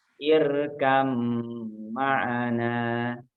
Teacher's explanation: maka dimasukkan, diidghamkan huruf ba sukun menjadi huruf mim. Jadi kalau dalam contohnya ini irkab ma'ana, nah itu tidak dibaca ba-nya, tidak dibaca mantul, tapi langsung masuk ke huruf mim.